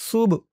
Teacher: সুব বাটা কলকলার হরফ ধাক্কা দিয়ে পড়তে হবে